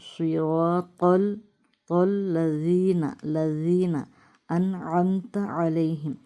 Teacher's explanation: سواد کو موٹی آواز میں، را کو موٹی آواز میں، تو کو موٹی آواز میں